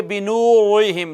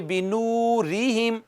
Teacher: ناظرین کرام ہم بات کر چکے ہیں کہ را کے نیچے زیر ہو تو را کو باریک پڑھا جاتا ہے، پر نہیں پڑھا جاتا